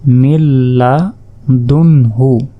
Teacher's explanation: নুন সাকিনের পর লাম অক্ষরটি এসেছে, তাই এখানে গুন্না ছাড়া মিলিয়ে পড়তে হবে। তাহলে মিম লামজের মিল, লাম জবর লা, মিল্লা, দাল নুন পেশ দুন হাফেশ হু, মিল্লা দুন হু।